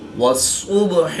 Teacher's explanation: با ساکن ہے تو یہاں پر قلقلہ صغرا کر کے پڑھیں گے